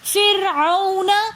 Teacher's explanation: فرعون میں واو ساکن اور اس سے پہلے زبر ہے، تو واولین بن جائے گی۔ واولین کو ہم بغیر کھینچے نرمی کے ساتھ اور جلدی سے پڑھیں گے فرعون۔ وَأَنْتُمْ میں نون ساکن کے بعد اخفا کے 15 حروفوں میں سے تا آ رہا ہے، تو اس لیے یہاں پر وَأَنْتُمْ ہم یہاں پر اخفا کریں گے۔